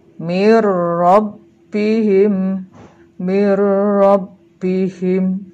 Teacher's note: Nah, pembacanya adalah ro-nya, ini nunnya seolah-olah hilang atau lebur ke dalam huruf berikutnya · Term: lebur tanpa dengung